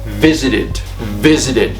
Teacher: the stress is on the first syllable then therefore I should not double that consonant before adding Ed